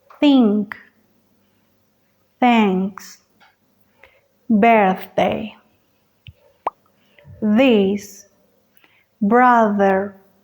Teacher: Para hacer estos sonidos necesitamos que la punta de la lengua, solo la puntita, salga un poquito y roce con el filo de los dientes frontales, solo un poco. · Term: fricativos